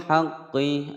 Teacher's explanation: Bil haqqi, ada al qamariyah dibaca jelas.